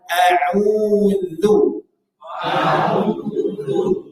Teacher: jaga sifat tipis pada huruf dalal pada kata auudu Coba kita praktikkan auu nah ini terkadang kita bacanya jadi tebal